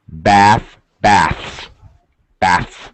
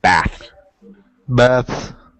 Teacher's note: So actually, because it's a little more difficult, it's important to pronounce the S, less important to fully pronounce the TH, so it has a slightly reduced pronunciation.